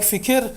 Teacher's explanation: So in words like fikir, the vowel in between the K and R is present, and you cannot drop it